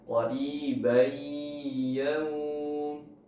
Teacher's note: Atau bacaan idgham tanpa gunnah, qaribai, bai, tidak didengungkan atau tidak masuk ke hidung. Jadi hanya qaribai, tidak didengungkan. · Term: idgham bi gunnah